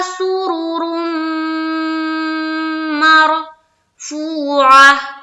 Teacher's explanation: और इस रा को जब हम मीम से मिलाएंगे तो पुर करके मिलाएंगे और उसके बाद मीम के ऊपर गुन्ना करेंगे, यानी कि थोड़ी देर नाक में आवाज को रोकेंगे